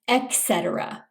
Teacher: Some people mispronounce this by saying etc. with a K sound. It's a T sound instead, etc.